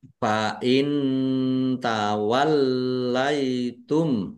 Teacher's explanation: nun sukun bertemu dengan huruf ta. Bacaan ikhfa dibaca samar-samar. Lamnya dibaca dobel ada tasdidnya ditekan dan ditahan biar tampak dobel.